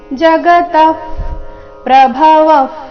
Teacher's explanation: ಜಗತ ವಿಸರ್ಗದ ಉಚ್ಚಾರಣೆ ಅರ್ಧ ಫ ರೀತಿ